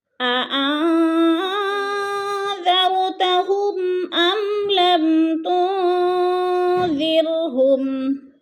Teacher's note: انذرتا کو لمبا نہیں کرنا، کھینچنا نہیں ہے، زبر ہے